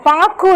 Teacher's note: அந்த கு வந்து நம்ம முழுமையா சொல்லாம குறுகிதான் நம்ம சொல்றோம் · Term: குற்றியல் உகரம்